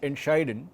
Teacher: the emphasis is not on ent, but it's on scheiden